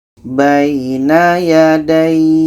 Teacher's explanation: cara bacanya kita panjangkan ini minimum 2 harkat baru matikan